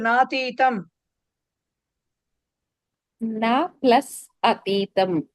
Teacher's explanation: న ప్లస్ అతీతం రెండు హ్రస్వాలు కలిసి దీర్ఘం వస్తుంది